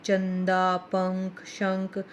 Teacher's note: अनुस्वार का उच्चारण नाक से होता है। ये न या म के समान होते हैं